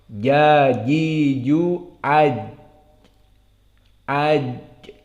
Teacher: Maka di sini perlu dijelaskan makhrajnya. Maka jim makhrajnya adalah wastul lisan.